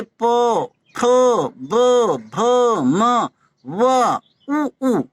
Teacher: ये वे अक्षर हैं जिनमें उच्चारण में दोनों ओठों का प्रयोग होता है। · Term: ओष्ठा